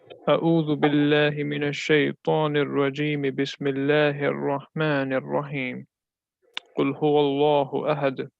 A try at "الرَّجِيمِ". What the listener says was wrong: read well, brother, but when you said Rajimi, make it more clearer. Make it more clear. This is also one of the things that when we read one haraka, it's fatha, dhamma, kasra, we read it fully.